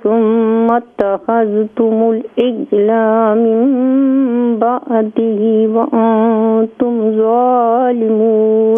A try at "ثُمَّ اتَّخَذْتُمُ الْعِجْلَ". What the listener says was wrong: ثم اتخذتم العجل, لام کو لمبا نہ کریں.